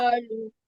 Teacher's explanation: কলু মোটা আওয়াজে হবে, কালু হয়ে গেছে।